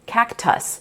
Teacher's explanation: Technically, that's two closed syllables, so you would expect that second syllable to have the short U sound, cactus. But, in that unaccented syllable, we hear the schwa as we do in many English words, that lazy i or uh sound